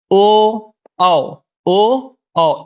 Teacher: ओ दैतो कंठोष्ठम, ओ औ, ओ औ, इनका उच्चारण स्थान कंठ और ओष्ठ होता है।